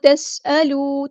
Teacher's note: تا باریک light letter ہے، سین بھی باریک لائٹ لیٹر ہے، اور سین کی سیٹی ہم واضح کریں گے. حمزہ قطعی، یہاں پہ حمزہ کی آواز واضح آنی چاہیے.